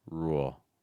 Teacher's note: I think the big thing is that pitch separation between the vowel, the ooh sound, and the dark L